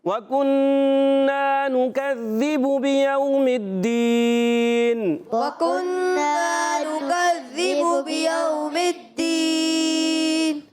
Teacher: واو ساکن سے پہلے زبر آ گیا، واولین نرمی سے ادا کریں گے · میم کی زیر کو دال سے ملا دیں گے. الف لام خالی ہے، اس کو نہیں پڑھیں گے. اور دال مشدد ذرا رک کر ادا کرتے ہیں.